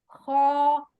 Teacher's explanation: خو، حلق کے پہلے حصے سے ادا ہوتا ہے